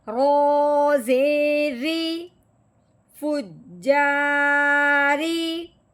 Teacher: رو کے نیچے زیر لگی ہوئی ہے. رو کے نیچے جب زیر آئے تو اس رو کو باریک کر کے پڑھتے ہیں. موٹا کر کے نہیں پڑھتے.